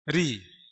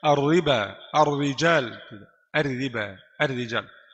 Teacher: ra kasrah dan keadaan yang dari jenis kasrah tipis